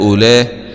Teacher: فهذا اسمه مد واجب متصل ومد مقدار 4 أو 5 حركات